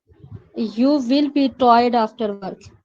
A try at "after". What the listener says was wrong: वैसे टी ये जो भी है, ये भी साउंड डी का है. आफ्टर नहीं, टी है, टी, इसको डी नहीं पढ़ना.